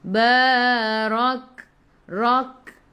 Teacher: Sikit sahaja angin pada huruf kaf. Sifat hurufnya hamas. · Ra baca dengan tebal, ra baris atas. Tafkhim.